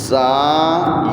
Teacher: یہ زا ہے، اس میں سیٹی کا تھوڑا سا ساؤنڈ دینا ہے